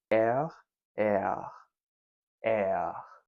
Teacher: Instead of the alveolar R, most French speakers pronounce the letter R with a guttural, uvular sound, like the one you heard me trying to emulate at the start of the video. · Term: uvular R